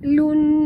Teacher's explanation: dengung pada nun bertasydid, wajib al-gunah